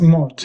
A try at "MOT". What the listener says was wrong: It's never said as mott. No one ever. I know looks like the word mott. No one ever says that. Everyone says MOT, and it it's called an MOT, and it's sort of said almost as if it was a word, MOT. That's how it said.